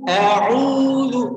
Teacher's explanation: Maka a'udzu, dan u-nya itu panjangnya 2 harokat. A'udzu, jangan lupa dal itu ada di ujung lidah, digigit antara gigi atas dan gigi bawah.